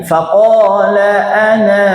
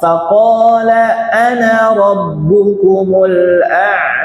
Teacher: semua lafaz ana itu dibaca pendek kalau Wasal kalau nyambung pendek